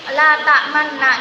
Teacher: mencampurkan dhamma pada sukun dengan mengoncongkan bibir dan mengangkat kedua bibir.